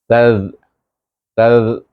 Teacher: pergi kepada mahras zal yang keluar antara gigi kacip dengan belakang hujung lidah.